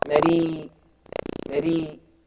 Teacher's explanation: If the ra has a kasra, it becomes muraqqaqa, softened.